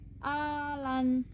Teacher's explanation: Mat lazim mukhafaf kilmi ini adalah mat yang terjadi jika ada mat tabi'i bertemu dengan huruf mati atau sukun. Cara membacanya adalah panjang 6 harakat.